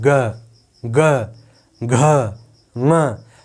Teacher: थोड़ा सा गर्जना हो रहा है, अंदर से थोड़ी सी नाद निकल रही है, थोड़ी सी आवाज़ कंपन करके ज़्यादा बाहर आ रही है। ठीक है, थोड़ी सी आवाज़ ज़्यादा कंपन करके बाहर आ रही है। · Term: सघोष